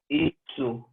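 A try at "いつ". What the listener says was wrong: Isu. Isu. Do not wait in between. Isu.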